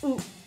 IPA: ʊ